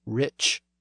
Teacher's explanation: we kept the southern form of rich with the CH sound at the end